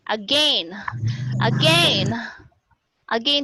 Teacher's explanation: Some people would pronounce again as this one, using the diphthong A-I-N.